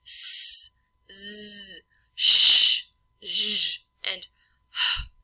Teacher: we have that constriction as the tongue is closing off the area in the mouth, and we also have some airflow through the teeth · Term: fricatives